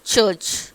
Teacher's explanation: So complete closure and slow release of air is called ஆஃப்ரிகேட்ஸ் · friction ஒரு உரசிட்டு ஒரு sound சொல்கிற மாதிரி இருக்கும், ஃப்ரிக்ஷன் அப்படின்னு சொல்கிறோம். ஓகேயா, here instead of explosive noise we can hear a friction of sound